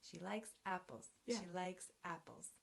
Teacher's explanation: she will be unstressed it's a pronoun likes is the main verb it will be stressed apples is a noun it will be stressed · The first syllable in apples is strong and the second one is weak.